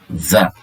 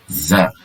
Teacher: Za ini makhrajnya lidah menyentuh kepada pangkal tempat tumbuh gigi seri bawah ini. Jadi za, ya, za. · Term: makhraj huruf za